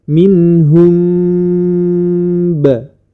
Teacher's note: menyamarkan atau menyembunyikan huruf mim pada huruf ba dinamakan syafawi karena huruf mim dan ba keluar dari syafatain atau dua bibir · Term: Ikhfa Syafawi